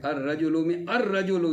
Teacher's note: جو الف لام ہے، اس کی جو لام ہے یہ حروف شمسی میں ادغام ہو جاتی ہے۔ اگر کوئی اس کے بعد آ رہا ہو حروف شمسی تو یہ لام اس حروف شمسی میں ادغام ہو جاتی ہے۔